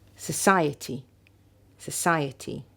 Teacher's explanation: weak strong weak weak